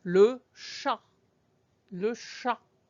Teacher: you don't even hear any sound for the T at the end of the word.